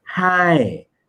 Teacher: So falling tone actually originated, the throat started closed and then opened up.